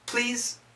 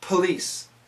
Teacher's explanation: please has a z sound police has an S sound